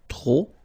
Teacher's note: don't pronounce the final P